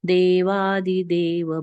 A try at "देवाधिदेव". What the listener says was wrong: देवाधिदेव, देवादिदेव नहीं है, देवाधिदेव। अगर हम देवादिदेव कहते हैं तो वहां पर आदि, आदि मतलब एक्सेट्रा, जो इंग्लिश में कहते हैं वैसा अर्थ हो सकता है। तो आदि, देवाधिदेव, ये ध्यान रखना।